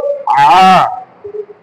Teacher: আলিফটা কেমনি স্বাভাবিকভাবে আলিফ জবর আ বা হামজা জবর আ, আর যখন আইন তখন একটু কি করে, কষ্ট করে কণ্ঠনালীকে চাপ দিয়ে পড়তে হয়